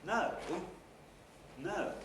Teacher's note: in order to get that full rise gesture of the pitch onto the syllable i stretch this a little out quite a lot